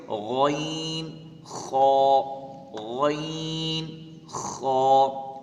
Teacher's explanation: حلق کے اوپر والے حصے سے ادا ہوں گے غین، خا